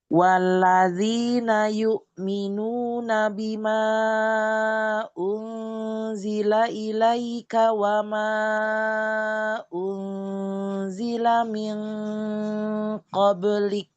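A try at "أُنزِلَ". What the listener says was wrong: Eh, sedikit lafaz unzila. Perhatikan. Intabihi harfu hamzah.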